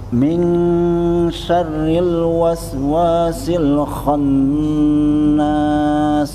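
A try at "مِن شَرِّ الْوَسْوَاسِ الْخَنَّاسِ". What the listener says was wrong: Ditekan lagi rohnya Pak. Syarril, Sama satu kayak Pak Usman tadi, R-nya kurang ditahan. Syarril, ada takrirnya Pak. Syarril, kemudian dengungnya dicoba 4 itu kan, 1, 2, 3.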